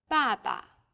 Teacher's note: there's a neutral tone this is very light weak and short